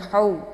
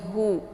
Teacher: ini letaknya di halqi bagian bawah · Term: H besar